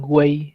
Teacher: ¿Te has dado cuenta que sonó la U y sonó la I también? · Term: triptongo